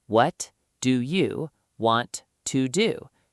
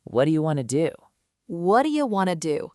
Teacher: 6 distinct sounds, but a native speaker compresses those 6 sounds into basically 2 sounds